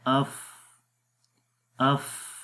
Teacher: اس کے بعد صفت رخاوت ہے، رخاوت میں آواز جاری رہتی ہے، تو آواز بھی جاری ہو رہی ہے · استفال یعنی اس حرف کو باریک پڑھیں گے، موٹا نہیں پڑھیں گے۔ آپ اس امیج میں بھی دیکھ سکتے ہیں کہ زبان کی جو جڑ ہے وہ تالو کی طرف بلند نہیں ہو رہی ہے، یعنی کہ آواز اوپر کی طرف نہیں جا رہی، اس لیے اس کے اندر صفت استفال ہے، باریک پڑھیں گے۔